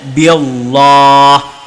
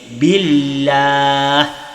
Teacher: lafaz Allah dibaca dengan bacaan tarqiq ataupun tipis.